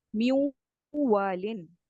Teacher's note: نون کا واو میں جب آپ مرج کرتے ہیں تو کہیں نہ کہیں نون کی صفت باقی رہتی ہے غنہ کی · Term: ادغام مال غنہ